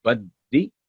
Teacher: بدی دال پر تھوڑا ٹھہر کے، تاکہ وہ جو مجموعہ ہے اس کا واضح ہو کہ یہ 2 الفاظ کا مجموعہ ہے، 2 ساؤنڈز کا.